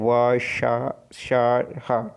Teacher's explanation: अब संघर्षी व्यंजन में क्या आएगा आपका जो है व श और ह। इन व्यंजकों के उच्चारण में दो अंग जो है एक दूसरे से इतने निकट आ जाते हैं कि बीच में निकलने वाली वायु के लिए संघर्ष करती हुई निकलती है।